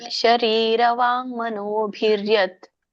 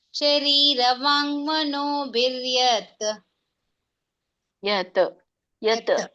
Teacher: ಕೊನೆಗೆ ಅನ್ನಂಗಿಲ್ಲ ಸ್ಟಾಪ್ ಮಾಡಿಬಿಡಬೇಕು